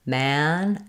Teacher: my jaw is the most open with my front of my tongue down and the back lifted.